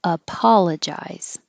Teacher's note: This O is stressed and it sounds like ah.